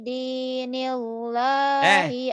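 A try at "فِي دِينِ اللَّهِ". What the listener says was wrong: Tipis. Jangan nilo atuh. Kan sebelum lebar lo-nya baris di bawah. Bukan pidi nilo,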